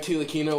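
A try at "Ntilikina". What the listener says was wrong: the T silent, but yeah. It's Nilikinka. I'm pretty sure the T is silent.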